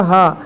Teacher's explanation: हा क्या होता है वो कंठ से उच्चारित होता है